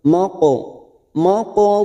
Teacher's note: selama tiga harakat siap masuk P huruf mim R am ma ada huruf q sukun yang mati asli di tengah kalimat kita pantulkan